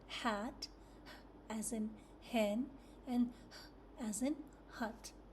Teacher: Your mouth is slightly open, breathy sound with tongue in a neutral position. Air escapes from the throat with no other part of the mouth touching.